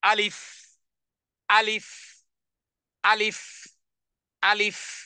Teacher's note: তাহলে প্রথম অক্ষর আওয়াজকে কঠিন করে মুখের খালি জায়গা থেকে টানবিহীন মুখের ভিতরের খালি জায়গা থেকে কোন রকমের না টেনে তাড়াতাড়ি পড়তে হবে এভাবে আলিফ আলিফ আলিফ আলিফ দুই ঠোঁট যেন একত্রিত না হয়